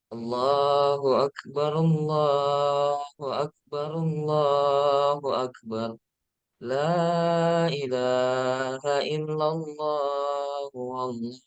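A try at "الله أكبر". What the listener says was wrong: Tidak ada hu-nya. Ini perhatikan, kesalahan pertama, kedua itu hu, ada huwa. Padahal perhatikan kata yang saya tulis. Wallahu.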